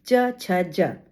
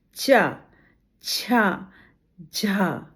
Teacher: अब च में यहां तालु पर जीभ का स्पर्श भी होता है और हवा निकलते समय संघर्ष भी होता है। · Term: स्पर्श संघर्षी